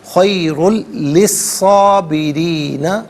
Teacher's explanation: للصابرین، صاد کھڑا زبر صا اور صاد الف زبر صاد دونوں طریقوں سے پڑھنا درست ہے، را کے نیچے زیر ہے، را کو باریک کر کے پڑھا جائے گا، خیر للصابرین، یہاں وقف کریں گے تو خیر للصابرین پڑھیں گے۔